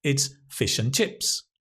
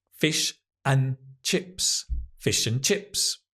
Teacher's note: Here, the and is not stressed. It's a weak form, un.